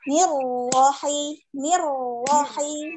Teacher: ro langsung satu kali ketukan langsung keluar